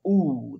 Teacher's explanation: एकदम बिल्कुल कंठ के पीछे से ध्वनि आ रही है